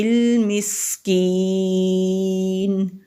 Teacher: سین سیٹی والے حروف میں سے ہے تو ہلکی سی سیٹی کی آواز آتی ہے